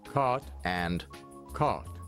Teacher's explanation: Canadians pronounce the words caught and caught the same